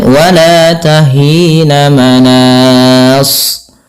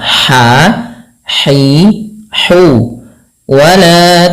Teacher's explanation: Bagaimana cara pelafalan-nya? Yaitu dari tengah tenggorokan kita. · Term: ha kecil